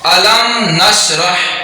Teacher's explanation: میم ساکن کو ظاہر کر کے پڑھیں گے اور اس کو اظہار شفوی کہتے ہیں